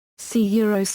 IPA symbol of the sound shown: ǀ ǀ